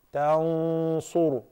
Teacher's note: In the case of the sad, the ghunna must be fattened as well.